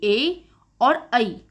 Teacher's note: ए और ऐ, इन दोनों का उच्चारण स्थान कंठ तालु है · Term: कंठ तालव्य